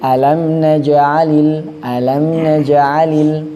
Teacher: janya gak boleh seakan-akan ada hamzahnya. Contohnya seakan-akan kayak ada hamzahnya alam najalil alam najalil. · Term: qalqalah